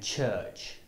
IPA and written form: tʆɜːtʆ (church)